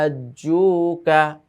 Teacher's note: টেনে গিয়ে 4 আলিফ আমরা গিয়ে জিমকে ধরবো, তারপরে আবার মাদের হরফ রয়েছে হাজ্জুকা, এইভাবে।